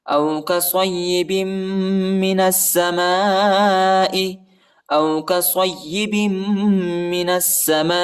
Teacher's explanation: الف پر جو ہے بڑا مد آیا ہے، اس کو تقریباً 3-4 سیکنڈ تک کھینچنا ہے